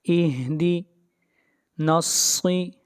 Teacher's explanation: صاد کو موٹا پڑھیں گے، صاد حروف مستعلیہ میں سے ہے